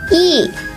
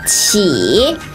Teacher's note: 一 fourth tone. 起 third tone.